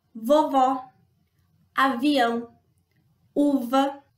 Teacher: para produzir a consoante V, a nossa garganta precisa vibrar.